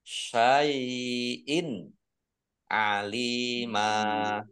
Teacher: Kasroh tanwin bertemu dengan huruf ain, bacaan izhar dibaca jelas. Lam kasroh ya sukun mat tabi'i panjang 2 harokat.